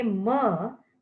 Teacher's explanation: air escapes through the nose so these sounds are called nasal sound